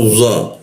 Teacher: Nah za dimatikan. Za posisinya di belakang gigi bagian atas ya, di lengkungan dia.